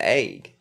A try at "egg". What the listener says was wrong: no you're saying it with an a it's pronounced with an E